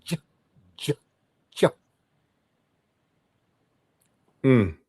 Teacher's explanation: the way you form your mouth is starting with a D, but you end up with a soft G, a D that becomes J, J, J.